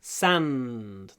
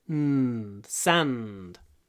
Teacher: Длинный «н». Sand. Надо держать.